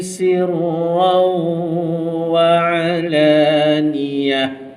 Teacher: kita kena masukkan dengan waw dalam waw beserta dengung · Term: idgham ma'al gunnah